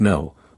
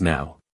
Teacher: One has the long O sound and is pronounced no, while the other has that distinct diphthong sound ow, and is said as now.